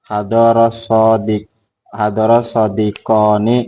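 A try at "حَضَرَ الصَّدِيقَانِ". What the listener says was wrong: Nah begitu sodiqoni, jangan hadaros sodiqoni. Lu salah orang hadoro as-sodiqoni. Makanya mat itu penting.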